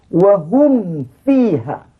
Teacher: Apabila mim mati betul dengan fa, jumpa dengan waw, jangan berbunyi hukum ikhfa.